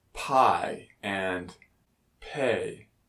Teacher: it is produced by pressing our lips together building up air pressure and releasing them without vibration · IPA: [p]